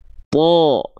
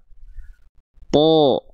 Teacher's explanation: Rongga mulutnya lebih tertutup kan? Pangkal lidahnya naik. Sehingga bunyi vokalnya bukan gak clear vokal A lagi, karena rongga mulutnya lebih tertutup, pangkal lidahnya naik.